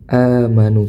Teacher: Maka dihukumi mad badal. Amanu panjangnya dua harakat. Amanu di sini meskipun wau sukun bertemu dengan huruf wau tapi tidak diidghamkan.